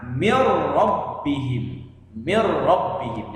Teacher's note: Jadi nunnya tidak terbaca, tapi langsung dimasukkan ke dalam huruf ro. Jadi yang dibaca adalah huruf ro-nya. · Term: idgham bila gunnah